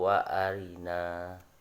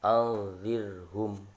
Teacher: ro itu dibaca tarqiq atau dibaca tipis